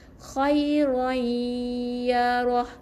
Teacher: Jadi masukkan bunyi tanwin dalam bunyi ya. Jadi khairai, kena dengar 2 harakat baru kita baca ya roh. Khairai ya roh. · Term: Idgham bi gunnah